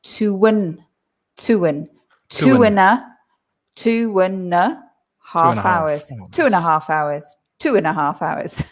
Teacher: because the and is weak. It's not and, it's und.